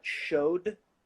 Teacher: Then we've got showed, which would be a d, because the o, a voiced vowel sound, so it's with d at the end.